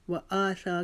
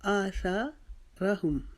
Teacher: و آثا کو ہم نے ایک جتنا لمبا کھینچا، را کو ہم نے بالکل چھوٹا کھینچا